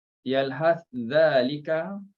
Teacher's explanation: yalhas zalika diidghamkan, dimasukkan sa dalam zal, diidghamkan